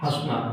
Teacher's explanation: जैसे मैं एक शब्द लिख रहा हूँ हंसना, जब इसको बोलेंगे तो इसमें क्या हो रहा है, वायु नाक से भी निकल रही है और मुंह से भी निकल रही है, और इसी को दर्शाने के लिए यहाँ पर चंद्र बिंदु लगा दिया गया, ठीक है। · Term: अनुनासिक